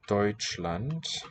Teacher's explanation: germany is this word deutschland which has an oi diphthong roughly